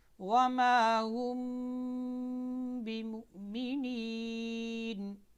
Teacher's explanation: میم ساکن کے بعد با آ جائے تو میم کو اس کے مخرج میں چھپا کر پڑھتے ہیں